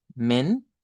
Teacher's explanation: esta es mention men con una e abierta